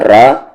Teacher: را ہیوی ہوگا کیونکہ را پہ زبر ہے